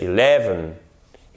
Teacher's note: C'est bien un accent tonique sur la seconde syllabe.